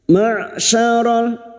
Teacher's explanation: Huruf ain memiliki sifat jahar dan tawasud.